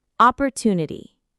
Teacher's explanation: The stress is on the 3rd syllable.